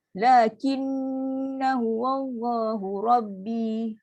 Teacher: Kalau baca sambung, na ni satu je. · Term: satu akad